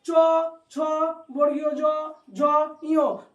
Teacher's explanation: যেমন চ, চ উচ্চারণ করো, জিহ্বাটা স্পর্শ করছে তালুতে, তালুটা মানে এই জায়গাটা, তালুটা মানে এই জায়গাটা।